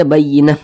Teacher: Kalau kita tidak berhenti ya dibaca huruf ta. Kalau kita berhenti tepat di huruf ta marbutah dibaca menjadi huruf ha. Nah, kemudian ini kita baca bayyinah, jangan dibaca bayyinatin, jangan.